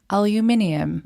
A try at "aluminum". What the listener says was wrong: You're putting extra letters in that word.